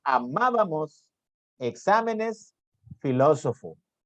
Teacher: tienen la mayor intensidad en antepenúltima sílaba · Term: esdrújulas